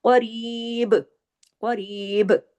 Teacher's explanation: قاف ہیوی ہے اور با پہ کلکلا ہو رہا ہے